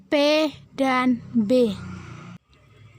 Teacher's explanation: Bunyi hambat, kedua bibir terkatup, saluran ke rongga hidung tertutup. Kemudian katup bibir dibuka tiba-tiba.